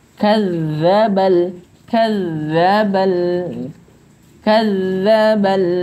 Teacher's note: di sini za yang ditasydidkan, jadi getarannya harus tertekan sedikit ya